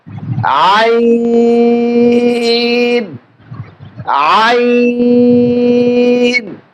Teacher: হলকের মাঝখান থেকে আমরা উচ্চারণ করব আইন।